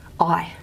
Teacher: it's a diphthong so we get two slots that means it's two mores